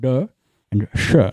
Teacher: These are retroflex sounds produced by bending the tongue back in the mouth at the point of articulation.